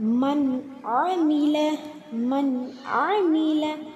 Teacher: நூனுக்கு அப்புறம் ஐன் இருக்கு. ஸோ நம்ம நூனை தெளிவாக ஓதணும்.